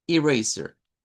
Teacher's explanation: Es con una schwa al final, igual que t-shirt. Miren, con schwa al final.